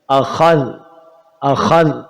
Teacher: اس میں خا موٹا ہوگا، ذال باریک ہوگا، حمزہ اپنی جگہ نکالا جائے گا. اخذ اخذ، ذال کو اخذ نہیں کر دیں گے، ذال کو موٹا نہیں کریں گے، اخذ.